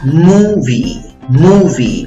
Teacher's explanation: En la sílaba de la izquierda, la primera sílaba contando de izquierda a derecha, tienes la U con los 2 puntitos. La U con los 2 puntitos significa U larga, ¿ok? Tienes que hacer la trompita para que te salga. Y tanto la I como la E se pronuncian como una sola vocal. · Tienes que hacer la trompita para que te salga. Y tanto la I como la E se pronuncian como una sola vocal. El sonido es el sonido de la I larga